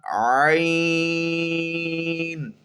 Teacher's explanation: تو آج جو عین کا مخرج ہے یہ وسط حلق سے عین ادا ہوتا ہے